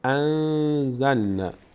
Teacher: اینجا نون ساکن بعدش نه حرف حلقی است، نه حرف یرملون هست، نه حرف با هست، اینجا اخفا میشه. یعنی نون از مخرج خودش ادا نمیشه، مخفی میشه در بینی، به همراه مقداری وقف روش میشه